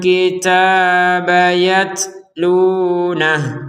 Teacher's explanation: harokat dhammah dari huruf hu ini jadi tidak terbaca harokatnya dan tidak ada panjang sama sekali. Yatlunah, jadi berhentinya di nah seperti itu.